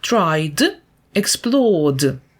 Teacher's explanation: закінчення і ді вимовляються як д у словах